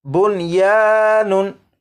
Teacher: नून साकिन के बाद या और वाव हरूफ यरमलून में से अगरचे हैं लेकिन नून साकिन को इदगाम करके नहीं पढ़ेंगे।